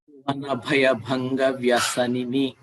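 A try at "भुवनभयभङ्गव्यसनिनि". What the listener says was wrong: Bhanga Vyasanini. Stress more on v there. Second v is heard.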